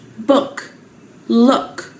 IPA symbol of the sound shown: ʊ